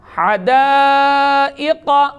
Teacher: حروف مستعلیہ میں سے قاف ہے, لہذا قاف کو ہر حال میں پر پڑھنا ہے